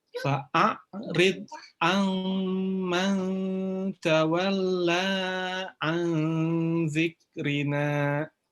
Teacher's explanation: ada nun bertemu dengan za, ini juga ikhfa ditahan 3 harakat